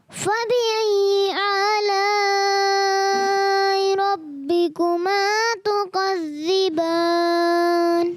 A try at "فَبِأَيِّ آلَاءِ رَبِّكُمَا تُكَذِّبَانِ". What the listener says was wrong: اچھا فبأي آلاء, حمزہ کو خوب واضح کرنا ہے, عین جیسا نہیں بنا ہے. فبأي آلاء ربكما تكذبان.